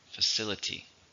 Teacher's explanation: How many syllables are in facility? 4, stress in the second.